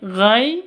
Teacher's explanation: sifat Lin lentur lemas tidak boleh disentak